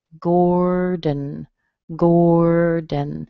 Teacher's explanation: we use a D and a schwa and an N